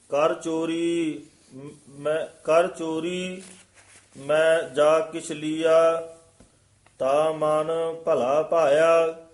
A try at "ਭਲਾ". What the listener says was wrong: ਇਹ ਭੱਲਾ ਨਹੀਂ ਕਹਿਣਾ, ਤਾਂ ਮਨ ਭਲਾ ਪਾਇਆ।